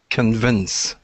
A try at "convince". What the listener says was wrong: There you go. Yep, stress on the end.